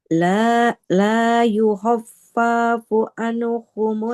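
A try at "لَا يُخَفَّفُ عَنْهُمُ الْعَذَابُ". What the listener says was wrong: Fa-nya nggak panjang.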